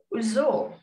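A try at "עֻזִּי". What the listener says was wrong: What's your second vowel?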